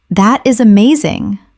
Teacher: When you say, That is amazing. your tone rises with excitement. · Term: intonation